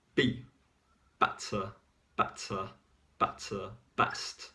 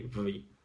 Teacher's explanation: a b better better better best short and intense okay and the letter v is longer with more vibrations and less intense